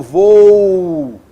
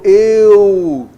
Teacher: Você nota então que você tem uma vogal seguida de uma semivogal.